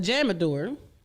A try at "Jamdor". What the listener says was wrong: Nah, I don't see an A in between the M and the D.